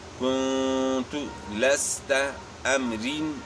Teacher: را کے نیچے جو ہے نا 2 زیر ہیں تو یہ باریک ہوگی